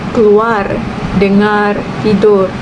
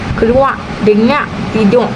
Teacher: Dalam dialek Kedah pula keluar, dengar, tidur. Ini perubahan fonem R kepada Q ataupun GH.